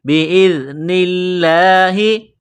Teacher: بِإِذْنِ اللَّهِ، حمزہ کو ذال کے ساتھ ملانا ہے، پلس کرنا ہے، ذال پڑھتے وقت زبان تھوڑی سی باہر نکالیں گے۔ بِإِذْنِ اللَّهِ، لفظ اللہ کے نام سے پہلے زیر ہے تو لفظ اللہ کے نام کو باریک کرنا ہے۔